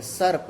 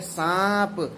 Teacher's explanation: नीर अनुनासिक है सर्प, लेकिन तद्भव में सांप, स के ऊपर अनुनासिक ध्वनि लग गई।